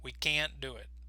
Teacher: the word can't is going to be stressed because in English the negative words are often going to be more important